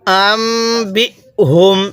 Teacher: মিম সাকিনের পরে বা থাকলে সেখানে গুন্নাহ করতে হয়